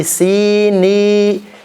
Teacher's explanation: Di situ ada huruf ya berharakat huruf ya bertanda sukun nin, ya kan? Ya sukun sebelumnya kasrah, itu makhrajnya di al-jauf. Jadi jangan sampai masuk hidung.